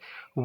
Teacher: वा के उच्चारण में दंत और ओष्ठ की सहायता ली जाती है, इसलिए वा आपका दंतोष्ठ होता है।